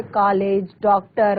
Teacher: ठीक है, तो ये का और ओ यानी कि आ और ओ के बीच की एक कोई ध्वनि है